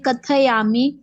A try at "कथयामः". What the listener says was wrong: त नहीं बोलना है, थ की उच्चारण करना है, थ, क त नहीं, क थ।